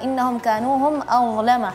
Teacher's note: Huruf dha yang perlu diperhatikan adalah dha-nya ya lidahnya keluarin sedikit ya.